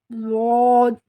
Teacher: آپ کی ٹنگ کا، زبان کا رائٹ سائڈ کو اپنے دانتوں کے رائٹ سائڈ سے ٹچ کر کے بولنا ہے، داہنی سائڈ سے، سیدھی سائڈ سے ٹچ کر کے بولنا ہے آپ کو۔